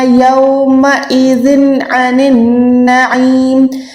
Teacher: یہاں پر ذن عن النعیم، یہاں پر اظہار کا قاعدہ ہے، تنوین کے بعد عین آئے گی، یعنی عین حروف حلقی میں آتا ہے تو ہم نے یہاں پر تنوین کو شو کرنا ہے، ظاہر کرنا ہے